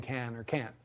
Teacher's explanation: It's very hard for her to figure out often whether I'm saying can or can't, because the difference between them is really mostly just, can't is really just can plus a glottal stop